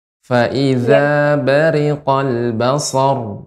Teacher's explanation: tidak ditahan basor, namun dibaca sedikit mengalir. Fa iza bariqal basar, dan dibaca dengan tebal.